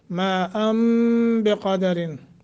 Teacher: है फिर आगे नून तनवीन के बाद बा है تو یہاں نون تنوین کو ختم کر کے میم سے بدل کر کے پڑھیں گے